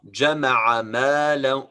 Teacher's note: Make sure that this is a short vowel. Don't extend the sound of عين.